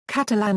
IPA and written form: ˈkætəlæn (Catalan)